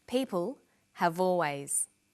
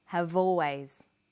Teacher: Notice how in conversation we link the final consonant sound v with the initial vowel sound or.